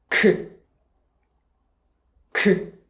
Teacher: harsh and aspirated air comes out.